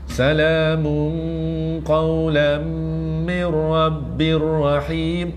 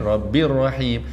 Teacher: Tanwinnya sengit tapi jumpa ra sabdu tak dengung.